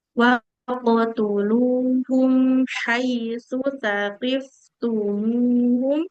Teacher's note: Mim sukunnya nggak boleh memantul Ibu